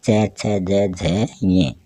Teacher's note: जो जीभ है वो अपने तालु के टच होती है, स्पर्श करती है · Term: तालव्य व्यंजन